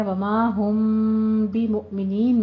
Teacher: میم ساکن ہے، اس کے بعد آپ دیکھیے کہ با آ رہا ہے، اخفا شفی کرنا ہے۔